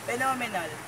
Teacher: Next example is phenomenal. The stress put in second syllable.